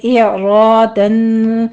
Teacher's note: یہاں پہ اظہار حلقی ہوگا او میں واو لین ہے اعرادن یہاں پہ آپ نے حمزہ پھر عین کی آواز لانی ہے